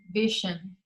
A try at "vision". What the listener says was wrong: You are pronouncing it with the previous one, with the sh. Exactly, the correct pronunciation is vision. With this phoneme, vision.